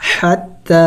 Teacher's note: ح حروف حلقی میں سے ہیں اور وسط حلق سے ادا ہوتی ہیں